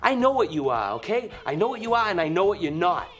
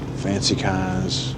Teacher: l'accent de Boston va avoir beaucoup de R dropping, c'est-à-dire que le R n'est pas prononcé.